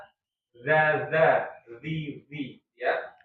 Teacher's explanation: Jadi sebenarnya yang keluar itu bukan murni udara tapi suara ya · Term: jahar